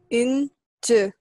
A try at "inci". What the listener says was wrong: No, the last one is softer. Inci. Yeah, it's pretty close. Inci.